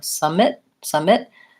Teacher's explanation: I'm long and stretched out on the first syllable I'm short and reduced on the second